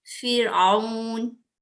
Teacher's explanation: रा साकिना के पीछे कसरा है, अब इस रा को हम बारीक पढ़ेंगे